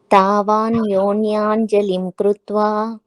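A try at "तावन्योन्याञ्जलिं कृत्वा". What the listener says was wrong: Perfect.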